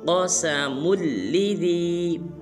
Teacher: بس مسلمان اس حرف کو پڑھ دیتے ہیں قسم لذی، یہ بالکل غلط ہے۔ میم کو آگے لام مشدد کے ساتھ ملائیں گے اور قاف کو پر ادا کریں گے